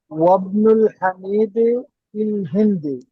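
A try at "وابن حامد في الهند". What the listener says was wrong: অবনু হামিদিন, অবনুল হামিদ, আলিফ লাম দেয় নাই নামের সাথে, দেখে পড়েন, হ্যাঁ।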